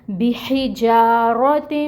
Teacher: ناک میں آواز لے کے جائیں گے 2 کاؤنٹس کے برابر. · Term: غنہ